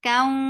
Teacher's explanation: Ra, kaw, idgham with gunna. Keep the sound in your nose for a longer time.